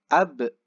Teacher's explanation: Ada e-nya ya. Ab. Mantulnya ke e. Bukan abe. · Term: pantulannya